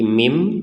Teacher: Iklab itu artinya membalik. Cara membacanya adalah dibaca nunnya ini mim, bukan dibaca min. Nah, jadi dibalik huruf ba-nya nanti ya, sebelum membaca hurufnya itu kita membacanya mim seperti itu.